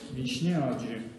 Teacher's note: озвончилось [ч], в [дж] перешло